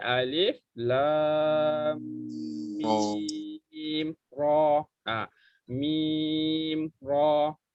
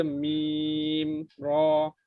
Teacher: Mim tu habiskan, masuk terus masuk ke huruf ra. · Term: izhar syafawi